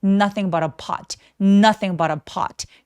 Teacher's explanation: 빠르고 뾰족하게 어 느낌으로 소리 주세요